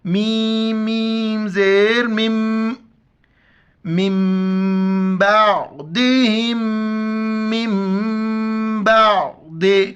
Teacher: میم پر شد ہے، ناک میں آواز پیدا کرنا ہے، غنہ ہے